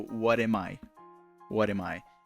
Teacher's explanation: the M in am, the word am connects with I.